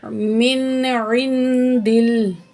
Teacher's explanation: दाल की ज़ेर को हम लाम तशदीद के साथ मिला के पढ़ेंगे। मिन इन दिल, दाल की ज़ेर को लाम तशदीद से मिला के पढ़ेंगे। · तो यहाँ भी नून साकिन के बाद दाल है जो कि हरूफ इख्फा में से है। नून की आवाज़ को नाक में छुपा के पढ़ेंगे। आइन ज़ेनुन इन, दाल ज़बर को, दाल ज़ेर लाम दिल, दाल की ज़ेर को हम लाम तशदीद के साथ मिला के पढ़ेंगे।